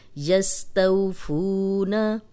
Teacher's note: वाव मद्दा, जज़म वाली वाव पीछे पेश आ गया, इसको 2 हरकत लंबा करेंगे, नून की ज़बर को लंबा होने से बचाएंगे।